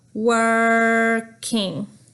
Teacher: The word working, that is a vocalic R. There's no vowel after the R, so we go working.